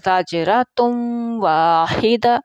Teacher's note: اب تا 2 پیش ہیں اور واو کے ساتھ یہ ملے گی